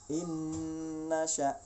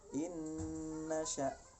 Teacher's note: Innasya. Nah, bunyi non matinya itu menjadi hilang, lesap dengan non sesudahnya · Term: idgham bi gunnah